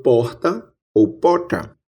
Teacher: temos a pronúncia de uma fricativa aspirada R